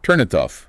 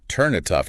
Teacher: The tongue doesn't have to stop. It just glides from the N to the I and the T to the O. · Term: linking